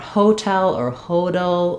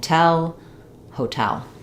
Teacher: not overly stressing on the first syllable of hotel with the O vowel. It still is a clear vowel, but I don't want hotel or hodel or any of that.